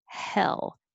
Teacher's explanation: Your tongue stays lower. It never rises like hay. It stays flatter. Hell. And it just comes up in the front for the L.